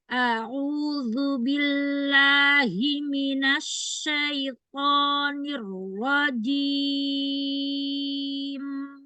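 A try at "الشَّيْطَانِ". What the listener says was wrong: Syaito, syaito. Tebalkan lagi. Syaito. Iya, langsung gitu. Jadi jangan ada ancang-ancang toknya ya. Temukan aja langsung di makhrajnya. Terus dia tuh naik suaranya tapi nggak lurus ke atas langit-langit, tapi naik ke atas langit-langit tapi ke arah agak depan. Syaito, syaito.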